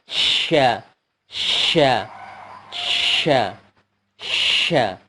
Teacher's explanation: Kemudian setelahnya huruf sya. Sya adalah makhrajnya pertengahan lidah menyentuh langit-langit atas, dan salah satu sifatnya adalah tafasyi, menyemburkan banyak udara